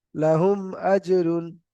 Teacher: মিম সাকিনের পরে মিম আর বা ছাড়া অন্য অক্ষর হামজা এসেছে, তাই মিম সাকিনকে বিনা গুণনায় পড়তে হবে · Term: ইজাহারে সাফাবি